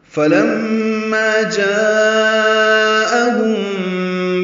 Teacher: جاءہم میں الف مدہ کے بعد حمزہ آنے کی وجہ سے مد متصل ہے